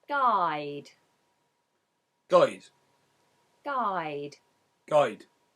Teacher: In the West Country accent, this is more like oi. It's more rounded with the or vowel rather than the a vowel at the beginning. So in standard British English we have I, but in West Country we have I. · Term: I diphthong